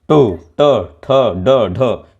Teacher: अब ट बोलने में क्या होता है कि मूर्धन्य हो जाता है।